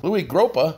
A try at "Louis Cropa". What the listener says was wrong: Number 1, it's Louis Cropa. You said Gropa.